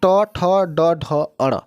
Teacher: अब इसके आगे देखिए मूर्धन्य या कठोर तालु के अगले भाग से, यानी कि तालु के अगले और दांत के जस्ट ऊपरी भाग में जब जो स्पर्श होता है उसे मूर्धन्य कहा जाता है।